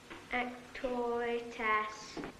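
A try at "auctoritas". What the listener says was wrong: Not as. Arse. Lord knows you should be able to pronounce that.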